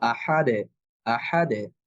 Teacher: যেভাবেই আসুক, যদি এই পাঁচটা হরফের কোনো একটা হরফে সুকুন হয় তাহলে আমাদেরকে কলকলা করে পড়তে হবে। অর্থাৎ যখন আমরা পড়বো তখন এটার প্রতিধ্বনি হবে, শব্দটা আবার পুনরায় ফিরে আসবে · দাল হরফটা যেহেতু পাতলা হরফ, ফলে এর কলকলাটাও পাতলা হবে। দাল হরফের উপরে যদিও দুই পেশ আছে, কিন্তু আমরা যদি এখানে থেমে যাই তাহলে এখানে একটা অস্থায়ী সুকুন হবে।